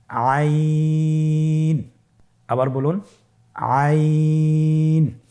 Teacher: আইন হরফটি কণ্ঠনালীর মধ্যখান থেকে উচ্চারিত হয়।